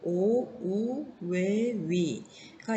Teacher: 그리고 입술 모양에 따라서 나누어지는 모음들은 첫 번째 입술 모양이 동그랗게 튀어나오는 원순 모음이 있고요